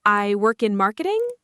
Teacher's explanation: the voice goes up at the end even when it should stay flat · saying I work in marketing with a rising voice as if you're asking someone to confirm that you work in marketing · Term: question tone